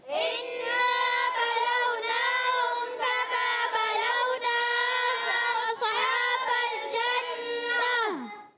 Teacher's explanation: جب نون مشددہ ہے تھوڑا پکڑ لیا کریں، میم مشددہ ہے تھوڑا پکڑ لیں، جلدی نہیں کرنی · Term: غنہ